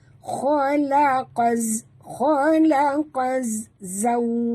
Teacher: Jadi kita baca bunyi dia khalaqaz, khalaqaz zaw. Waw sifatnya lin atau huruf lin, maka kita sebut tu dengan lembut dan muncungkan mulut ya. Khalaqaz zawjai, ya juga sifat lin ya, huruf lin.